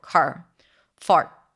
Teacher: It's a long vowel. It's like a diphthong, right? There is the vowel and then it changes to the R. There is transformation there and it needs time. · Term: soft R